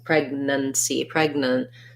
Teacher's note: because we're stressing on preg, we don't have an ah sound in pregnancy, pregnant. So we just have a schwa there